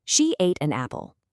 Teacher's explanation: Notice how the word an connects so smoothly to that open a vowel sound at the start of apple? It just glides.